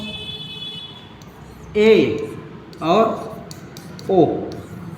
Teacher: बाद देखते हैं अर्ध संवृत अर्ध संवृत में हमारा जिससे हमारा ऐसा स्वर जिनके उच्चारण में हमारा क्या होता है मुह लगभग आधा बंद रहता है